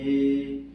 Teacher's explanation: तो सबसे पहले कंठ में जा रहा है। उसके बाद से जीभ जो है तालु पर जा रही है। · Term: कंठ ताला